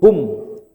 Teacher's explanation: Jadi hum itu dari tenggorokan bawah langsung ke bibir. Hum, jangan ada interval waw.